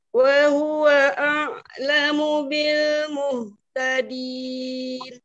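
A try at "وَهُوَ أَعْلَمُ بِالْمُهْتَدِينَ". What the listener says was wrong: Wa, wanya dibuka. Wa, buka. Lidahnya relax. Wah, wah, dibuka ruang mulutnya.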